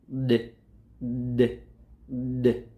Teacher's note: There is a vibration in my vocal cords. It means it is a voiced consonant.